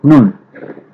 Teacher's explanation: জিহ্বার আগা তার বরাবর উপরে তালুর সঙ্গে লাগিয়ে উচ্চারিত হবে স্বাভাবিকভাবে